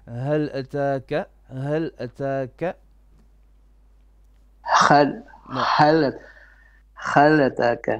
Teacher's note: No, you're making ha as in middle throat ha, like alhamdulillah. No, this is hal, more bottom throat, more deeper, but a bit softer as well